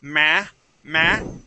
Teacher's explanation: we kind of place the sound at the top and it kind of rings through our nose a little bit